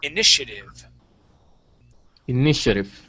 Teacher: this T here in the middle, we would pronounce that more like an SH